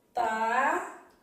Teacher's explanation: E na palavra estavam, eu tenho 7 letras e 7 fonemas. E a letra M, na palavra estavam, tem som de U, ou seja, ela emite aqui um som de semivogal.